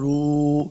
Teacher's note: واو کو جب پڑھیں گے دونوں ہونٹ گول کرنے ہیں